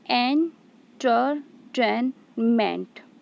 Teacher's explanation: So here enter, these two syllables are unstressed, ten is stressed, and ment is unstressed.